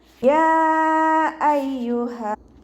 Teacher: യാ എന്നുള്ളത് ഒരു വേർഡും അയ്യുഹ എന്നുള്ളത് മറ്റൊരു വേർഡും. അപ്പോൾ ഇവിടെ നിയമപ്രകാരം മദ് ജായിസ് മുൻഫസിലാണ് വരുന്നത്. 2ഓ 4ഓ ഹർക്കത്ത് നീട്ടിക്കൊടുക്കുക.